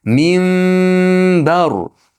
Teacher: Ixfo bilan degani ushlab turish bilan lablar bir-biriga qattiq yopishib olmaydi.